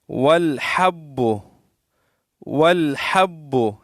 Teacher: یہ ہا ہے، حلق سے ادا ہوتی ہے، ہاں نہیں۔ اکثر لوگ پڑھتے ہیں والحب، والحب نہیں ہے، والحب، والحب اس طرح پڑھیں گے۔